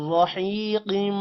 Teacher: يسقون ناکو لمبا نہیں کریں گے. من رحيق حی لمبا ہوگا یا کی وجہ سے اور قوف موٹا ہوگا